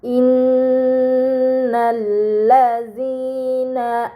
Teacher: terdapat nun bertasydid, ini dinamakan huruf gunnah, maka harus dibaca dengan gunnah yang dipanjangkan